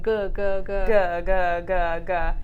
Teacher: you definitely feel that vibration on the go